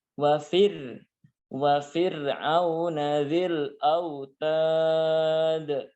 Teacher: wa fir'auna itu dibaca wafir. Yaitu dibaca dengan tipis karena sebelum huruf ro ada huruf fa yang kasroh